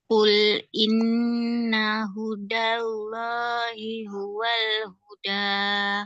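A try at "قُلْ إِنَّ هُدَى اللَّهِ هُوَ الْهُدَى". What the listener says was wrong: Nah, Allahnya buat berat, buat tebal. Hudallahi. Nah, setiap kalimat Allah, lafzul jalalah namanya kalau di Quran setiap kalimat Allah kita bilangnya lafzul jalalah. Nah, setiap kalimat lafzul jalalah kalau sebelumnya berbaris fathah atau berbaris dhammah, maka Allahnya harus dibaca tebal. Hudallah, hudallah, hudallah. Tapi kalau misalkan sebelum lafzul jalalah ada huruf berbaris bawah atau kasrah, maka lafzul jalalahnya dibaca tipis. Jadi bukan misalkan a'udzu billahi, bukan billahi, billahi tipis.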